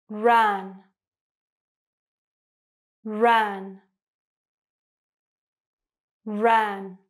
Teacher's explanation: So your tongue is very low in your mouth. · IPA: /æ/